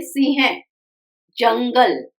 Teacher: यह अनुस्वार है न की आवाज देता है हल्के से